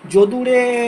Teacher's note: অনেক দূরে কেউ দাঁড়িয়ে থাকলে তাকে ডাকার সময় যে ধরনের উচ্চারণ করা হয় শেষে এ দিয়ে টানা হয়, তাই তো? তো সেটাকে প্লুত স্বর বলা হয়, তাই তো?